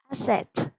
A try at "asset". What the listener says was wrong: Yes, I can hear asset. I can't hear the letter T in this word. Asset.